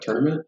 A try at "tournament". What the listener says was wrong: I say tournament. You said tournament. You pronounce the O and the U. It sounded like you actually say it like it's spelled, which is I usually say